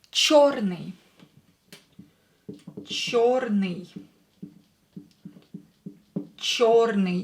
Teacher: Yo is always stressed, черный. So try to pronounce it longer, emphasize it.